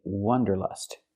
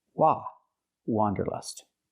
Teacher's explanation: We cannot say wanderlust. We cannot use the short sound like cup and up. We have to use the open ah sound.